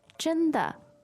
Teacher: The tones there. first and neutral.